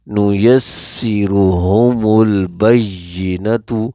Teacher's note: اچھا، اصولاً تو یہ ہوتا ہے کہ جب کوئی لفظ پیچھے والے لفظ کے ساتھ مل رہا ہو، جیسے یہ البینۃ جو ہے پیچھے والے لفظ کے ساتھ مل رہا ہے، یعنی میم لام میں مدغم ہوا ہے، لام میں مکس ہوا ہے، تو ویسے بہتر یہ ہے کہ پیچھے سے ان دونوں کو پڑھا جائے، جیسے نُیَسِّرُهُمُ الْبَیِّنَةُ۔